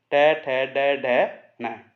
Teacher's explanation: ट ठ ड ढ न। ये मूर्धा से बोला जाता है। तालु के बाद में दांतों से पहले मूर्धा होता है, मूर्धन्य ध्वनियां हैं। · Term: ट वर्ग